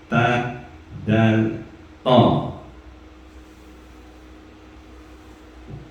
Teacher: Huruf to, dal, dan ta makrotnya di ujung lidah lewat pangkal gigi seri atas. Jadi atau ujung lidah bekerja sama dengan pangkal gigi bagian atas.